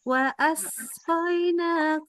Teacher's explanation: Asnya harus lebih desis lagi ya.